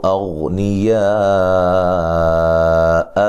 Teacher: غین کو موٹا ادا کرنا لیکن ہلانا نہیں ہے